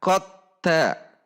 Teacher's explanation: Contohnya qad tabayyana, dal sukun di depannya huruf ta. Maka dilebur dal sukunnya kepada huruf ta secara sempurna atau idgham kamil.